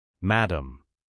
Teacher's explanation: On a la nasalisation, mais pas de R final.